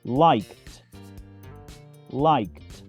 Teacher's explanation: Y este verbo, si bien termina en una E, su última consonante es sorda, la letra K, por lo que se pronuncia liked, como una T al final, en pasado o participio.